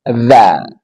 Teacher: Dha, ujung lidah dari permuatasnya bertemu dengan ujung dua gigi seri atas. Dha. Ini sama makhrajnya dengan fa, dha sama.